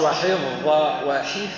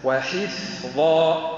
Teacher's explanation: بالفاء فا ساكنه يجري معها النفس